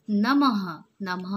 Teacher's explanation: जब हम कोई भी शब्द को पढ़ते हैं ये डॉट के साथ, तो ह का साउंड आना चाहिए, ह का. जैसे प्रातः, प्रातः, प्रातः मतलब प में र की मात्रा है, आ की मात्रा है, त में अह की मात्रा है, तो ह ह का आवाज़ आना चाहिए. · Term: विसर्ग